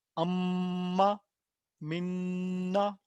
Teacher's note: नून पे आवाज़ ठहरते हुए लंबी होनी है